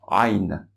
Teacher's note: La lettre Ain, elle est très difficile à prononcer parce qu'elle doit se prononcer du fond de la gorge en essayant de restreindre le passage. Presque si on s'étranglait, même si on se coinçait ici, on se serrait au niveau du bas de la gorge.